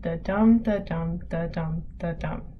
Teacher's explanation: We say them with more force than other syllables. In this poem, every weak syllable is followed by a strong syllable. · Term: regular rhythm